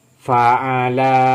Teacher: Ininya yang dibaca panjang. Fathah bertemu dengan alif, ininya yang dibaca panjang.